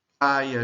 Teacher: Em praia, o ditongo decrescente é formado pela vogal A seguida pela semivogal I. Então, nós separamos o ditongo da vogal A.